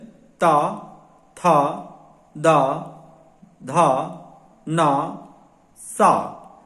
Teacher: इसमें हम देखते हैं कि हमारे जो ऊपर के दांत हैं उससे जीभ टच होती है, इसलिए इनका उच्चारण दांतों से होता है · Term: दांतों से उच्चारित